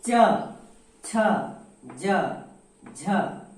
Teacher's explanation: तो हमारी जीभ तालु में स्पर्श करती है